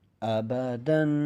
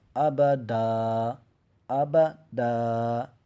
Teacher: جب ہم نے وقف کرنا ہے نا تو ایک زبر کو سکپ کر دینا ہے، ایک زبر پڑھا جائے گا۔